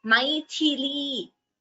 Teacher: Maithili. Tha is Mahaprana.